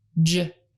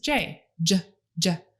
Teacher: Ch, J. Because it's made exactly the same way as CH, only the voice is on. Have him put his hand on his neck to feel if it vibrates when he says J, J, J. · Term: J sound